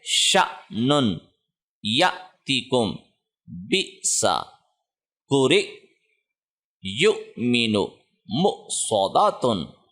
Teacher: تو ہم نے پڑھا تھا کہ الف کے اوپر کوئی بھی سائن آئے تو وہ جزم میں حمزہ میں تبدیل ہوتا ہے. تو حمزہ کے اوپر جب بھی جزم ہو پچھلے لیٹر کو جب اس سے جوڑتے ہیں تو جھٹکا دیتے ہیں